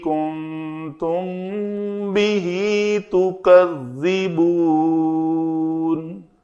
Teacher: میم ساکن کے بعد با آیا تو ہم نے اخفائے شفوی کیا، میم کی آواز کو دو حرکت کے برابر ہم نے چھپایا